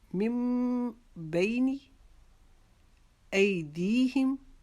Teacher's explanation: ای کو بھی ہم ایک الف کے جتنا لمبا کریں گے، دی کو بھی ہم ایک الف کے جتنا لمبا کریں گے کیونکہ یہاں پر جو یا ہے یہ ساکن ہو گئی ہے، یا کے اوپر جزم آپ کو نظر آ رہی ہے.